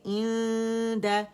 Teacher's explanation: دال کا مخرج بالکل نون کے ساتھ ہے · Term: اخفا